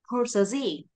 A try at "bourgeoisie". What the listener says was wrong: Ê, bour nha. Bour. Bour. Không phải poor, poor là nghèo. Cái chữ bờ phải giọng dạy lên. Bourgeoisie.